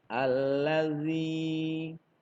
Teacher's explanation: zal bertemu dengan ya yang sebelumnya berharokat kasroh, maka dibaca panjang 2 harokat